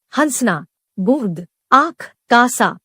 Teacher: इसके उच्चारण में हवा नाक और मुंह दोनों से निकलती है। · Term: अनुनासिक